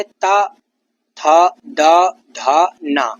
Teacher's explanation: ये दंत वर्ण है। जीभ दांतों से टकराती हुई इन वर्णों का उच्चारण करती है।